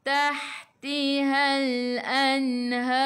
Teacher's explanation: Har sebelum huruf akhir ada alif yang tak ada baris ma'rif sukun boleh baca 2, 4 atau 6 harakat. Matikan dengan huruf ra. Ra-nya kena tebal, lidah naik ke atas.